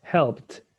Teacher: Because the sound is help. No vibration, so it's the T.